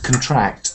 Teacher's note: to get smaller is a verb and it has a stress at the end